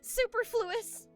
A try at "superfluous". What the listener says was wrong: Yeah. The the the emphasis is on the purr.